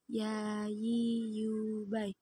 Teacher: Huruf yang keluar dari tengah lisan disentuh dengan langit-langit.